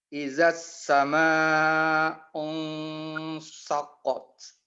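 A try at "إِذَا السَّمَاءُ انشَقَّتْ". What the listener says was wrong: Koreksi Opung pada ikhfanya. Mohon agar ditampakkan lebih jelas lagi bahwa itu ikhfa kepada shin. Unshaqqat. Idzas sama'u unshaqqat. Langsung dekat kepada makhrajnya dia. Kalau dia dibaca ini jadi tafkim ya, tapi dia harus ditarik sedikit ya. Unshaqqat.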